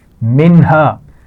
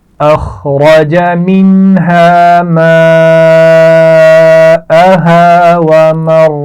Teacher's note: منہا نون پر جزم ہے اور اس کے بعد ہا ہے تو کیا یہاں پر غنہ ہوگا؟ نہیں